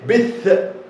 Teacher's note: ركز في الحروف المتشابهه بين الثاء، الثاء من الحروف اللثويه، والساء. الثاء بيوضع طرف اللسان ما بين الفكين ما بين الاسنان وينطق الحرف ثاء